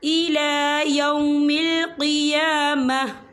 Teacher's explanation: وقف کی صورت میں تا جو ہے ساکن ہو جائے گا